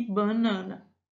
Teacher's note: Por exemplo, nós podemos dizer banana e banana. Vejam que na segunda ocorrência há a nasalização do primeiro A.